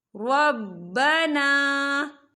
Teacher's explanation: الف سے پہلے زبر ہے اور اس پر چھوٹی سی مد بھی ہے، تو ہم اسے 4 حرکت کے برابر کھینچ کے پڑھیں گے